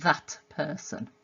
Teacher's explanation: the alveolar plosive at the end of that has been assimilated to the p, the plosive, the bilabial plosive that's coming in person. That person instead of that person. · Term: assimilation